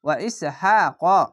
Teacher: কফটি একটু মোটা করে পড়বেন